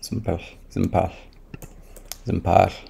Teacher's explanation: The vowel totally dropped out. Yeah, because it was just a schwa.